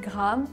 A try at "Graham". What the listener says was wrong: We say Graham. You said Graham, G-R-A-M. In the UK, we like H-A-M on the end of a name becomes Graham. You need to add the Y in there. Because like, you know, like vowel, consonant, vowel, right?